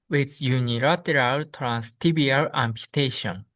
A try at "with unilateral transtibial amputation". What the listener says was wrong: Good, very good.